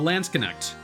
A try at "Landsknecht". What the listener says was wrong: It's just at the end. It's not a sh. I actually looked it up.